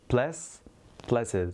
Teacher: Blesses is ES. Did you notice that we are hearing a little bit of Z sound and it's all longer?